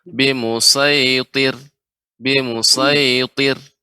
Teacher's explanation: ra yang disukunkan ya sebelumnya kasrah tipis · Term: ra yang tipis